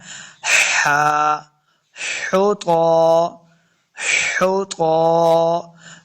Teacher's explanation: خا اور ہا کا ساؤنڈ نہیں آنا چاہیے، بلکہ ہا حلق کے درمیان والے حصے سے ادا کرنا ہے